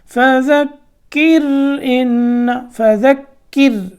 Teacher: را باریک کرنی ہے، کیوں؟ اس سے پہلے کاف کے نیچے کیا ہے، زیر ہے